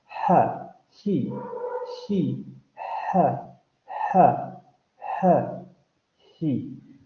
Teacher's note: Efectivamente, un glotal fricativo sordo no lo tenemos en español. Sabemos que lo vamos a articular en la glotis, vamos a generar turbulencia y va a ser sorda.